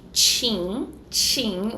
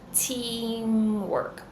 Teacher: but the true T in English is a little bit different you're going to say a t sound with the quality of s